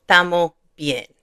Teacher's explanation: you don't really hear that S, so it just says Tamo bien